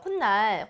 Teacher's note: 앞말의 끝소리에 니은 소리가 하나 더 나는 거